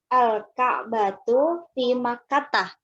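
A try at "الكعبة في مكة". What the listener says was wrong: Bagus sekali.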